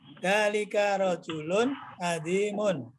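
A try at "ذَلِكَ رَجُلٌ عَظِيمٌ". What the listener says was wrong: Nah, kalau Bapak begitu dzalika rajulunnya satu, azimunnya belakangan. Tidak seperti itu. Intonasinya penting. Jadi jeda antara yang dua belakang khobarnya itu tidak ada. Sedangkan yang pertama harus berjeda, ya.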